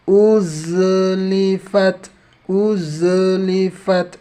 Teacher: ini zainya ini ada sifat rikhwahnya ya. Tunaikan rikhwahnya, nggak boleh terburu-buru. Uzlifat, nggak boleh juga terlepas dari langit-langit ya, dari makhrajnya nggak boleh lepas, nanti ada pantulan.